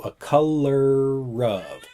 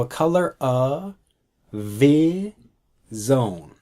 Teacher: we take the ER sound from color and move it over to up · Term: blending